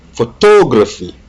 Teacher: stress on second syllable